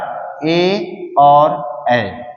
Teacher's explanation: ए और ए का उच्चारण कहाँ से होगा? कंठ और तालव्य के मिलने से होगा। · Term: कंठ तालव्य